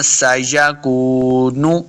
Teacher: دونوں ہونٹ گول کریں گے تب واو کا مخرج صحیح ادا ہوتا ہے